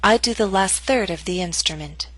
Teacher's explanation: primary stress is in the middle of the statement your voice will continue to fall after the word third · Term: falling intonation